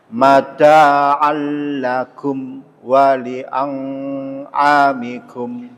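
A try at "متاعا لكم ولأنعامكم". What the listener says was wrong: A-nya nggak pakai dengung, A-nya kurang bagus ya Pak, kurang ke tengah sedikit. Mata'an lakum wa li'an'amikum.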